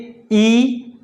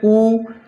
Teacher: ऐसे स्वर जिनके उच्चारण करते समय जो हमारा मुख होता है, मुख वो बंद हो जाता है, लगभग पूरा ही बंद हो जाता है, तो ऐसे स्वरों को समृत स्वर के अंतर्गत रखते हैं।